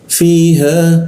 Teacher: fiha kita panjangkan dua harakat ya. Fiha jangan lebih karena kalau lebih seakan-akan kita menambahkan hamzah seperti itu.